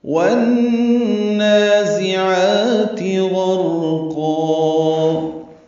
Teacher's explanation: 2 حرکات لمبا کرنا ہے، وسط حلق سے عین ادا کریں گے، تا کو جلدی اور معروف پڑھیں گے۔